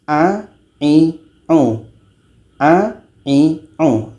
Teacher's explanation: hurufnya memang ditenggorokkan tapi ketika sebutnya itu lidah kita biasa saja tidak terangkat